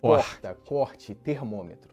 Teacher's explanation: É um R que soa mais arranhado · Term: R arranhado